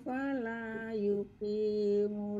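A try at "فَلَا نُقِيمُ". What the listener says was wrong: Baik, ada yang salah hurufnya. Fala nuqim, pakai nun.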